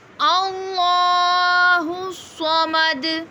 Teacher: اللہ کا نام بھی ہم پر پڑھیں گے کیونکہ اللہ کے نام سے پیچھے والے حرف پہ زبر ہے